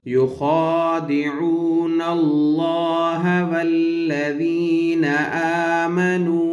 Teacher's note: اللہ کا نام ہے اس سے پہلے زبر ہے اس لیے اس کو موٹا پڑھیں گے